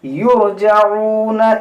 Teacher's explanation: یہ را موٹا کریں گے کیونکہ را ساکن سے پہلے پیش ہے